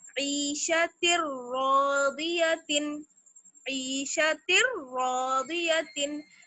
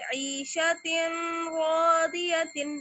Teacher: Last example है हमारे पास रा का, ईशतिर रादियतिन, ईशतिर रादियतिन, तिर, ता पर देखिए ता पे तनवीन में से दो जेर हैं और उसके बाद क्या है, रा मुशद्दद। तो ता को हम जब रा से मिलाएंगे तो तनवीन की साउंड बिल्कुल खत्म हो जानी चाहिए रा की वजह से। ईशतिर रादियतिन, ईशतिर रादियतिन, इसको हम ऐसे नहीं पढ़ सकते, ईशतिन रादियतिन नहीं, तिन ऐसी आवाज नहीं आएगी, ईशतिर रादियतिन। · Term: इदगाम बिला गुन्ना